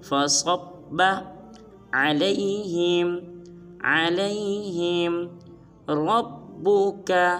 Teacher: صاد کو با مشدد کے ساتھ ملائیں گے اور صاد کو پر ادا کریں گے